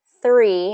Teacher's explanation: it has that voiceless TH sound, and the R